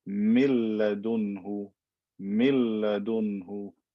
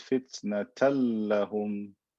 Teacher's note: If I have the word min ladunhu, or if I have the word fitnatan lahum, right? What happens when the noon meets the lam, it gets merged into it and it disappears. So min ladunhu becomes mil ladunhu, mil ladunhu.